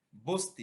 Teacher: যেমন বসতি, ব অ স অ ত ই এর ভিতরে অ ধ্বনিটি লোপ পেয়ে হয়ে গেল বস্তি, অর্থাৎ বসতি শব্দটি হয়ে গেল কি বস্তি, অর্থাৎ স এর সাথে যে অ ধ্বনিটি উচ্চারিত হয় এই অটি উচ্চারিত না হয়ে স এর সাথে ত যুক্ত হয়ে গেছে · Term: স্বরলোপ